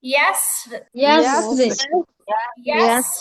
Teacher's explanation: ঠোঁট গোল হবে না, তাহলে তো মোটা হয়ে যাবে। يسر নরমালি নিচের দিকে থাকবে, ইয়াস, ইয়াসরে, ইয়াস। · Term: পাতলা